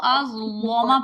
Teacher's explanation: اظلم پہ انہوں نے ازلما کو ازلما پڑھنا ہے لام موٹا کر کے